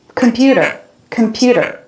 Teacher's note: him computer computer they're all saying that with a flat computer a flap instead of a t sound